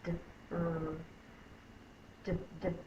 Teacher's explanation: It is not the j drum sound. It's d, d, d.